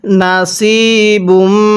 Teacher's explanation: সদকে যদি সিন উচ্চারণ করি তাহলে পড়াটা সহি শুদ্ধ হবে না